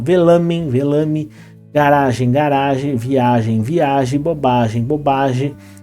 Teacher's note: é PST tônico perde a a nasalidade perde o n então ele fica com esse som oral ele perde o caráter nasal